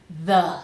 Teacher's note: tongue between the teeth vibrating and then shwah